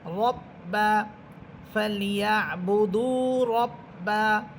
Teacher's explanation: র হরফেরটা মোটা হবে কারণ র হরফের উপরে আছে জবর